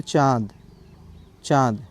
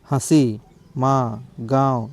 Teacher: तो ये जो चंद्रबिंदु होता है जब इसका हम उच्चारण करते हैं तो दोनों से होता है। एक तो मुख से होता है दूसरा आपका नासिका से होता है। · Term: अनुनासिक